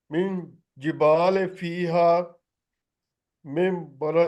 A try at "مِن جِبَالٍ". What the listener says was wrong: جبالی نہیں ہے، لام کے نیچے دو زیر ہے.